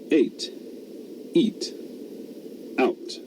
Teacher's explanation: a glottal stop, pronounced in English at the beginning of words that start with vowels